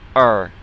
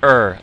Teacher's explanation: I'm saying R back in my throat